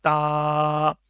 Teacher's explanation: वो ऊपर वाले जो दांत हैं उसकी जड़ के साथ लगेगी, तब ये लफ्ज़ अदा होगा